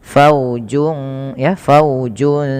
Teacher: Pada fal faujun sa di sini ada bacaan ikhfa hakiki yaitu cara bacanya suara junnya samarkan ke huruf sin